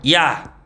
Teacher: 반모음이랑 단모음 아가 연속해서 발음하죠. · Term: 이중모음